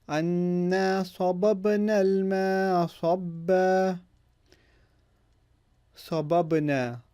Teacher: You hear the qalqala of the ba here with the ba sukun.